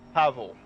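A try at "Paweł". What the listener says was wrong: It's not a V.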